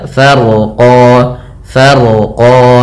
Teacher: Kemudian rnya dibaca dengan tebal karena huruf ro yang dia sukun sebelumnya fathah. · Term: Rya tebal